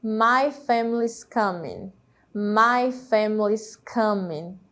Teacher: Notem como a letrinha I ela não é pronunciada por conta da elisão e por conta de ser uma vogal não tônica